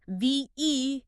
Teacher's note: That high sound in the middle becomes almost silent. It's just a quick little transition.